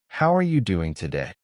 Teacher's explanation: You copy the stress on how and the rising tone at the end.